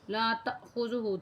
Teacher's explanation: تا کو الف کے ساتھ ملا کے جھٹکا تھوڑا سا دیں گے کہ الف کے اوپر جو ہے نا جزم بھی ہے، اسے تھوڑا سا ہلکا سا جھٹکا دیں گے اور پھر آپ پڑھیں گے اسے۔